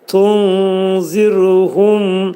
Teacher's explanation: Tunzirhumda ra hərfi incə oxunacaq.